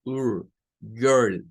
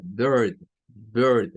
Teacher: se escucha algo que no es una I, sino que es un sonido entre una E y una U. Y es un sonido característico que aparece en la combinación ER y R cuando es la última parte de una sílaba, no al final de las palabras, porque cuando aparece al final de las palabras ahí pasa otra cosa.